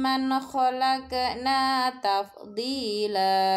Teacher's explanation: Nun sukun bertemu huruf kho disebut bacaan idhar halki, dibaca jelas nunnya.